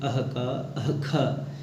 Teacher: जिह्वा मूलीय जो कि वर्ण कहे जाते हैं अह का अह ख, इनका उच्चारण स्थान होता है जिह्वा मूल